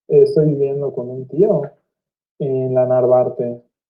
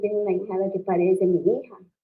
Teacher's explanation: se caracteriza por acentos monotonales altos que tienen un pico prealineado